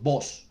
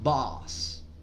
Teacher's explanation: No es una O, tampoco es una A, es una combinación de ambas.